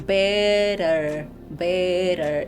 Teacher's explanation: You're tongue taps that little ridge at the roof of your mouth and that's where you're going to do the tap to do the soft R sound.